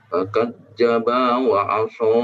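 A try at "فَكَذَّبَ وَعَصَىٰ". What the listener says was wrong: Dilihat untuk fakadzdzaba ba-nya pendek, kemudian wa 'asa hanya 2 harokat saja, jangan terlalu dipanjangkan.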